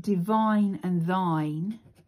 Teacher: those are clear, masculine, strong rhymes, because these are stressed syllables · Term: masculine rhyme